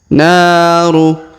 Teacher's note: Perhatikan naru, huruf na kita panjangkan 2 harokat, ada alif di depan huruf na